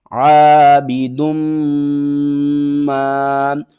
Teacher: میم مشدد ہے تو یہاں پر ہم غنہ کریں گے، اور دال کو میم کے ساتھ ملا کر پڑھیں گے · عین کو آپ نے حلق کے درمیان والے حصے سے ادا کرنا ہے ، اور دال کو ہم نے میم کے ساتھ ملانا ہے، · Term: ادغام